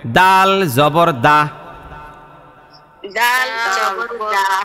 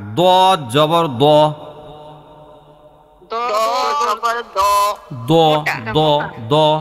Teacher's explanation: দালের উচ্চারণ পাতলা হয়, আর দোয়াদের উচ্চারণ মোটা হয়।